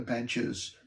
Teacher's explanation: the S at the end of benches, for instance, is a Z sound, so it doesn't count.